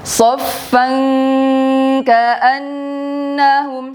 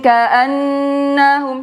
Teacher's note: bunyinya seperti dikuatkan di bagian tempat huruf kaf ya nak ya. Ini bunyinya dengung kuat